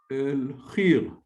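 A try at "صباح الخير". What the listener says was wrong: Not exactly, not khir, but because over the kha there is a vowel. And then the ya is got the sukun, like a mute.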